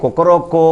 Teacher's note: మొదటి కో ఒకటి చిటికలో అయిపోతుంది రెండో కో అని దీర్ఘం తీసేది రెండు చిటికలు మూడో కో ఏదైతే ఉందో అది మూడు చిటికల్లో పూర్తఅవుతుంది